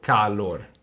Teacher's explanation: when I say calor I open my mouth a little bit more I let my jaw drop